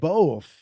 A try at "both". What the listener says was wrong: And you say both like I do. You put the L in there. Yeah, you do. Both.